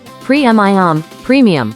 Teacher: Divide it into pre, mi, The first syllable pre has a long E sound, while mi has a short I sound.